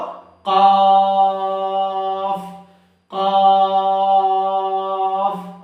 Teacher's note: জিহ্বার গোড়া উপরেরটা, অর্থাৎ জিহ্বার গোড়ার সাথে যে উপরের তালু আছে সেখান থেকে আমরা বলে ফেলবো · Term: দুই নোক্তাওয়ালা কফ